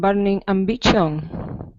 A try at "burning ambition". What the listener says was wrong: The T-I-O-N, is an SH sound like ship. Burning ambition. Yeah, it doesn't sound like a T at all.